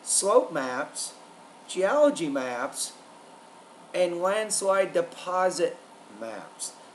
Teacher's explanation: the tone needs to rise on the first two and drop on the last one